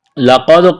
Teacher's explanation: لقد من اللہ علی المؤمنین اذ بعث فیہم رسولا من انفسهم يتلو عليهم آیاته ويزكيهم ويعلمهم الكتاب والحکمہ۔ لقد، قاف کو موٹا کرنا ہے، دال ساکن ہے، قلقلہ کریں گے دال پر